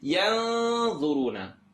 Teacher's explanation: Not in the throat, not yarmalun. I'm going to go ahead and make this tongue not touch, and it's going to be heavier because dha is heavy.